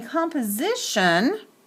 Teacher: because the second syllable is not accented the vowel sound in the second syllable of composition sounds like a schwa like a sound there's no oomph behind it so that's kind